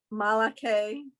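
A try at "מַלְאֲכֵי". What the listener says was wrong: Okay, and remember what I said before, it's mal ache. Yeah, you got to make sure you make that stop.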